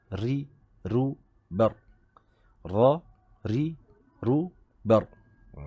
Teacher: Ra dia getarannya, takrirnya tidak boleh berlebihan. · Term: huruf ra